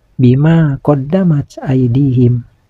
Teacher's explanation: Pada bacaan ini ada huruf mim yang berbaris fathah menghadapi huruf alif mati. Ini dinamakan mantobi'i yang harus dibaca panjang. Panjang bacaannya 2 harakat.